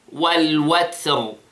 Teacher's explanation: Notice the sound of the ta, it has hams.